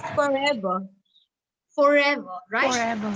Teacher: In RP, the R is not pronounced at the end of a word. Yes. However, you will pronounce the R if it is followed by a vowel.